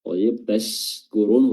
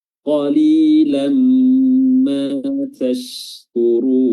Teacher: Tashkurun, huruf shimnya adalah makhrajnya di pertengahan lidah, diangkat bertemu dengan langit-langit dan memiliki sifat tafasyi di mana udara atau nafas itu menyebar di atas permukaan lidah.